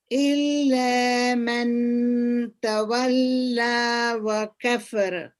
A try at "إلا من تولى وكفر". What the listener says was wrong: Also there is إخفاء here. من تولى. Don't make the noon very prominent. إلا من تولى وكفر.